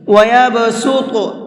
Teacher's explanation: یہاں پر صاد کو بھی اور طا کو بھی دونوں کو منہ بھر کے پڑھیں گے، پر کر کے پڑھیں گے